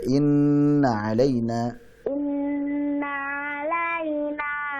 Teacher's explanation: Inna dipanjangkan ya gunnahnya